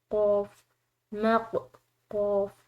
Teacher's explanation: قاف حروف قلقلہ میں سے ہے اور قلقلہ کے حروف کو ہلا کر ادا کیا جاتا ہے، یعنی کہ ایسا فیل ہو کہ قلقلہ کے جو مخارج ہیں، قلقلہ کے جو حروف ہیں وہ آپس میں جب وہ ادا ہوں تو آپس میں ایسا فیل ہو کہ جیسے کہ مخارج جو ہیں وہ ٹکر کھا کر الگ ہوئے ہیں، ٹھیک ہے۔